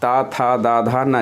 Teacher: तो जीभ जा करके इसके उच्चारण में उस मूर्धा वाले स्थान को स्पर्श करती है, करके देख सकते हैं आप लोग। इसी तरह जब हम ता वर्ग के वर्णों का उच्चारण करेंगे ये दांत को स्पर्श करेगी